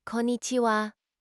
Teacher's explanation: it's pronounced with the emphasis on the second syllable